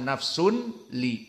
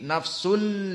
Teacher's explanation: tanwin masuk kepada lam tidak dibaca nafsun li tapi nafsul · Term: idghamnya